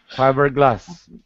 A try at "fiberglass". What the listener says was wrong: Yes, good.